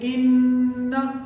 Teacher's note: ये नाक में आवाज निकलती है नून गुन्ना